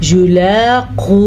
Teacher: या को लंबा नहीं करना, या पे सिर्फ पेश है, युलाक़ू नहीं पढ़ना आपने, युलाक़ू।